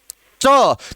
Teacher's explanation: जीभ ऊपर जो तालु का जो भाग है उसको स्पर्श कर रही है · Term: तालव्य